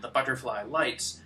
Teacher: plosives B's and T's and high long vowels which make the line pop out of the mouth more quickly